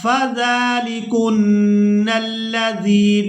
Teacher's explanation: तो यहाँ जाल को मिला रहे हैं तो जाल को खींच कर अदा करेंगे।